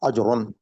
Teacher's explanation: اجرن، الف کے اوپر زبر ہے، اس کو منہ کھول کے پڑھنا ہے، اور جیم کے اوپر وہ ہے جزم ہے، ساکن ہے جیم، تو اس کو جو ہے ما قبل کے ساتھ ملا کے پڑھنا ہے. اور را کے اوپر 2 زبر ہیں، یہ تنوین بنتی ہے، تو اس میں نون کی آواز آئے گی